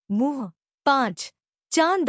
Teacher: इसे अनुनासिक कहते हैं। इसका उच्चारण नाक और गले दोनों से होता है